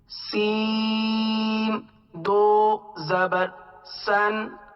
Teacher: سیٹی کی آواز کی طرح سین، صاد اور زا، یہ شین بھی اس کے ساتھ ہے، یہ حروف صفیریہ میں سے ہیں